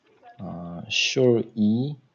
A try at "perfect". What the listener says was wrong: No, no, short e sound.